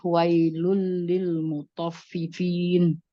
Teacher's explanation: Tanwin ketemu dengan lam, dibaca dilebur dan tidak didengungkan. Ya, dileburkan tanpa dengung. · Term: idgham tanpa dengung